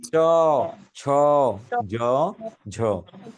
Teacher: এখন আর দাঁতে নাই, দাঁতের ঠিক উপরের শক্ত অংশ যেটা, এই জায়গায় জিহ্বা স্পর্শ করেছে, যে জায়গায় স্পর্শ করেছে তাকে বলে তালু। তালু থেকে যদি উচ্চারিত হয় তাকে বলে তালব্য বর্ণ।